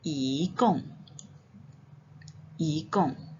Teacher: Kalau I ini berjumpa dengan tanda nada keempat, maka dia akan berubah jadi tanda nada kedua, iaitu kita akan baca dia sebagai 一共.